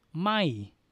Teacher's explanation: So we have the tone mark, this one, a little dot right here. This is low class, we have a little dot, so it gives you falling sound. Mo ma, M sound, m, sala I, my, falling sound, my.